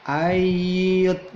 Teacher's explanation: Nasu ayyut rogu ayyut, nun mati ketemu iya, dibaca idgham bi gunnah. Ayyut, nunnya tidak nampak, tidak an, tetapi langsung masuk ke iya